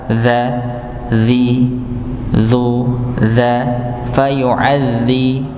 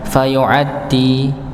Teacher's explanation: Ya, fayu'adzibuhu, huruf ain sekali lagi ditekan lagi, fayu'adzi nggih, masuk kepada huruf zal, bukan fayu'addi tapi fayu'adzi, zal nggih, ujung lidah bertemu dengan ujung gigi seri atas, za, zi, zu, za, fayu'adzi, bukan fayu'addi nggih, tapi huruf zal.